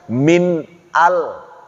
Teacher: Nun sukun ketemu dengan hamzah izhar. Tidak boleh ada dengung sama sekali.